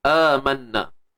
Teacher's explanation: Wajibul gunnah. Dengung kadar dua harakat macam biasa.